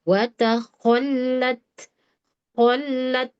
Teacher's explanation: Kemudian ma, hati-hati bukan ma fiha wa taqa, huruf tebal. Wa taqa, sempurnakan makhrajnya, ada gesekan ya di akar lidah. Wa taqallat, qallat gitu ya.